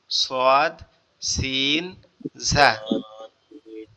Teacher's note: এর পরেরটা হচ্ছে আবার কোথায় লাগবে, জিহ্বার আগা সামনের নিচের দুই দাঁতের আগার সঙ্গে লাগায়, নিচের দুই দাঁতের আগার সঙ্গে লাগবে